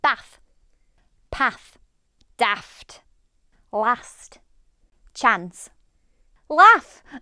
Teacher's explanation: In the Yorkshire accent this becomes a short vowel ah and this is similar to many other northern counties. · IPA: /æ/